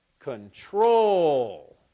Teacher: I think it sounds best as control so the stress on the second syllable